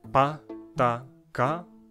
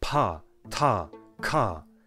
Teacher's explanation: Pa, ta, ka versus aspirated pa, ta, ka